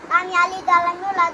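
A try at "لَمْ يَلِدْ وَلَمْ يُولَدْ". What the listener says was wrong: আর একটু ধীরে ধীরে। লাম ইয়ালিদ ওয়া লাম ইউলাদ। একালিফ লম্বা করে পড়বা না, মধ্য তবাই।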